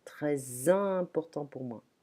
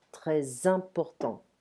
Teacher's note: The S of très leans into a vowel, a following vowel, sounding like a Z. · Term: liaison